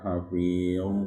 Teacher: Ya, pangkal lidah naik ya. Ya. Karena huruf isti'la.